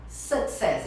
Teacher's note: A pessoa fala o U com som de U. Sucesso. O som é de A.